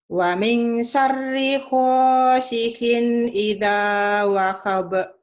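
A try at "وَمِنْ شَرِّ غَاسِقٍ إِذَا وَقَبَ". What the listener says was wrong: Ditukar. Di Jawa tuh go jadi ko, ko jadi ho, ya. Wa min syarri ghasiqin. Go. Wa min syarri ghasiqin idza waqab.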